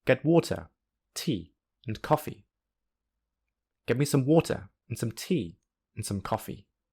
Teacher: the unstressed syllables are squeezed together to fit into the regular strong beats, and thus are spoken more quickly